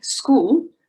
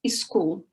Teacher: It's common for Brazilians to say school like escool, and we put a vowel in front of the word. So school becomes escool. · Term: vowel insertion